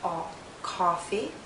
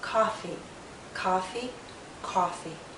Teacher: if you hear Oh coffee the lips are more rounded and the tongue is pushed backward more